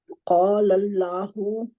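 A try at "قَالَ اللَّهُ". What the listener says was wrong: ये अलिफ को थोड़ा लंबा करना था बाजी.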